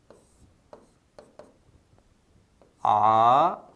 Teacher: जीवा पीछे की ओर धक्का खाएगी।